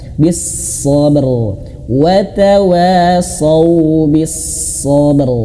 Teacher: rnya tebalkan pangkal lidah. Pangkal lidahnya kita angkat gitu ya